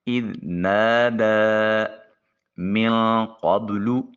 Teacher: نون ساکن کے بعد قاف حرف اخفا ہے، نون کو اپنے مخرج میں چھپا کر ادا کریں گے۔